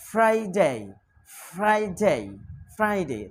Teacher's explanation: উপরের দাঁতের আগা নিচের ঠোঁটের পেটের সাথে লাগবে